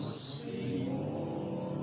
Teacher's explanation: Huruf sin tipisin, cengerin aja.